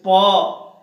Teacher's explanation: ओठ सटते हैं ना, ओठ से इसका उच्चारण होता है। ये उच्चारण स्थान है। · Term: स्पर्श व्यंजन